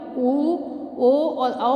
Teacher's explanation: होठों को थोड़ा आगे निकालकर जब गोलाकार कर लेते हैं तो ये वर्तुल स्थिति होती है, और ओ और औ वर्णों का उच्चारण होता है।